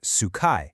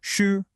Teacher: So it's not sukai. It's a highlevel tone followed by a quick drop